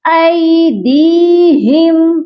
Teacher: یہ پڑھا جائے گا ایدیہم، اور اس کے بعد دیکھیں میم ساکن ہے، میم ساکن پر یہاں اظہار شفوی ہوگا، یعنی کہ میم ساکن کے بعد اگر میم اور با آتا ہے تو ہم غنہ کرتے ہیں جو کہ میم کے غنے کہلاتے ہیں۔ تو یہاں میم کا غنہ نہیں ہوگا، یہاں صرف میم پر اظہار کرنا ہے۔ · دی کو ہم اس لیے کھینچیں گے کیونکہ دال کے ساتھ یائے مدہ ہے اور یائے مدہ کو ایک الف کے برابر لمبا کر کے پڑھتے ہیں۔ یہاں پر ہم نے دال کو ایک الف کے برابر لمبا کر کے پڑھنا ہے۔